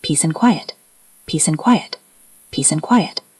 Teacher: P P sound, and ends in a D sound. Quiet starts with a consonant, so we don't always link that D strongly, but we do link the S and A.